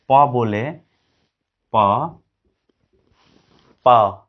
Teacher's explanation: हम एयर को दोनों होठ से रोक दिए हैं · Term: बाइलेबियल